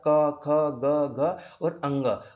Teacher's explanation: जो क वर्ग के जितने पांच वर्ण होते हैं उनका उच्चारण स्थान मेरे भाई गला यानी कि कंठ से होता है। कंठ से जैसा आप क, ख, ग, ग और अंग बोल के देखो आपको यहां से कंठ तालिका से ही उसका उच्चारण स्थान हो रहा है।